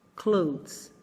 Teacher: É como um D que você não pronuncia completamente, seguido de um Z, de um sonzinho de Z bem levinho.